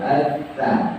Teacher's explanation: Sya tengah lidah bertemu dengan langit-langit. Kalau ta itu ujung lidah bertemu dengan gigi depan, atas dan bawah.